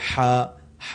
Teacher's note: اسی طرح جیم ہے، پھر ہا کو ہمارے ہاں لوگ ہا کی طرح ہی پڑھتے ہیں، جبکہ ہا حلق کے نچلے حصے سے نکلتا ہے